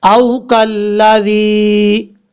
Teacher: حمزہ کے بعد واو مدہ ہے، ایک الف کی مقدار لمبا کریں گے